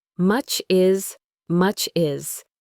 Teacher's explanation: The cha sound at the end of much and the i sound at the beginning of is almost become one sound.